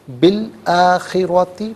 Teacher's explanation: بی الآخرات، با کے نیچے زیر ہے، اسے لام ساکن کے ساتھ ملائیں گے، درمیان میں سے الف حمزہ کو حذف کریں گے، بالآخراتی پڑھیں گے۔